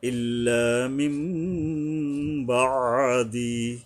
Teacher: এই নুনকে মিম ধরে পড়তে হবে কারণ নুন সাকিনের পরে বা আসছে এই কষেত্রে নুনকে মিম ধরে